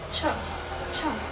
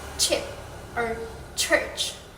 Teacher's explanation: The sound begins with a stop, where the tongue briefly makes full contact with the alveolar ridge, blocking airflow. Then, it releases into a fricative sound similar to sh, the sh sound. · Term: affricates